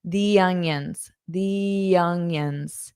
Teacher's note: You might hear a y sound before onion. Onion. That's to help with that linking.